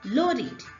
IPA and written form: ˈləʊdɪd (Loaded)